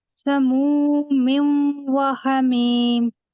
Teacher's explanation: میم کو واو میں داخل کر رہی ہیں، تو بالکل یہاں جو ہے وہ غنہ بھی ہو رہا ہے اور ادغام بھی ہو رہا ہے